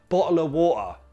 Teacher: He still uses the glottal T, bottle of water. Yes, he can remove the F altogether